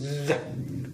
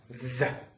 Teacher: the tip of the tongue is inter between the two teeth sets, so hence it's called interdental. It's happening a blockage of our airstream here, so it's interdental. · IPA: ð